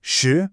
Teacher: shi, meaning 10, is the 2nd tone. It rises smoothly, almost like you're asking a question.